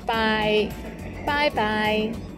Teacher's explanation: it sounds like the english bye bye but be careful to start with the first tone by followed by another one in the third tone bye bye